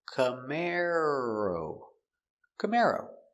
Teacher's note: Camaro stress on the second syllable